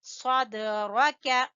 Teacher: را کو پر پڑھیں گے